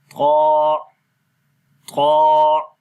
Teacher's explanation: اس میں فرق یہ ہے کہ قا موٹا پڑھا جاتا ہے، اور یہاں پر جب زبان کی نوک ثنایا علیہ کی جڑوں پر لگے گی تو اس وقت زبان پیچھے سے اوپر کی طرف چلی جاتی ہے، یعنی آواز موٹی ہو جاتی ہے۔